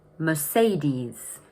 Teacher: Notice that the stress is in the middle of the word, and the ending is a long e sound.